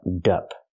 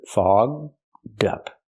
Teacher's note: link the d sound to the second word up, so you have dup. Together, fogged up.